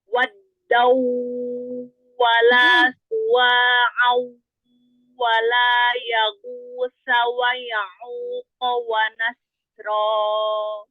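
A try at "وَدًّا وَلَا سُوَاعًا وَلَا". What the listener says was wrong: Wadau idgham pertama lebih ahsan dari yang kedua. Au, kalau yang au hilang suara gunahnya. Wadau wala suwa'au wala. Gunahnya jelas, jangan hilang ya. Dorongannya jelas, terbagi suaranya itu terbagi dari hidung, dari mulut, terbagi.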